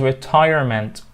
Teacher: 3 syllables, so the stress on the second one